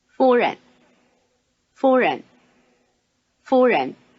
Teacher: notice the tone sequence high tone neutral tone